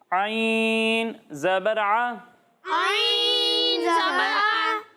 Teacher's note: جب ہم عین کی ادائیگی کریں گے تو اسے حلق کے درمیانے حصے سے پڑھیں گے